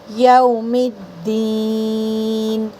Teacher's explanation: میم کو دال میں طاقت سے ملانا ہے اور دین اس کو کھینچ کر پڑھنا ہے